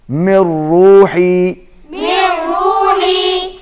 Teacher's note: ہے اور اس کے بعد را کے اوپر تشدید ہے تو یہاں پر میم را کے ساتھ مل جائے گا، نون کی آواز نہیں آئے گی